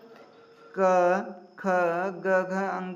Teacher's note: जो घ का उच्चारण स्थान है वो कंठ से है।